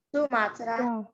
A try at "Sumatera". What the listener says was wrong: Sumatera. Bukan. Sementara. Jangan Sumatera dilogatkan ke Mandarin. Sumatera bukan. Sementara. Ya, jangan di Mandarin-Mandarinkan ya. Beda.